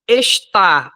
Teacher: Estar é oxítona, que a sílaba tônica é a última.